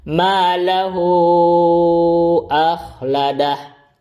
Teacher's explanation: Jadi hu-nya panjang 5 harakat. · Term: silah kubro